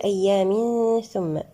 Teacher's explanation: هنا لدينا حكم الإخفاء الحقيقي بغنة مرققة المرتبة الوسطى